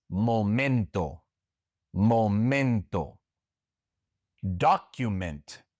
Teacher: The accent goes on the second to last syllable because these words do not end in a consonant other than s or n.